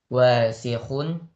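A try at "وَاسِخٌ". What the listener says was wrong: Pendek, wasihun. Wasihun, pendek. Ya, jangan dipanjangkan waknya.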